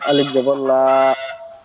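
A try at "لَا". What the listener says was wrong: জি, লাম আলিফ জবর লা, আর একটু টান হবে আর কি পড়ার মধ্যে, ঠিক আছে। লাম আলিফ জবর লা, আর একটু টান হবে, ঠিক আছে।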